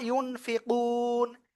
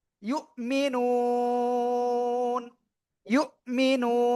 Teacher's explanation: ইউন ফি কু না হওয়ার কথা ছিল, কিন্তু এখানে আমরা থেমে পড়ার কারণে সাকিন হচ্ছে